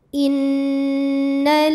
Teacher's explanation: Karena jika ada lam tasydid sebetulnya lam ini ada dua, lam sukun dan lam yang berharokat fathah. Lam yang sukun tidak dibaca, kita baca langsung ke lam kedua, sehingga bacanya dimasukkan. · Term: alif lam syamsiyah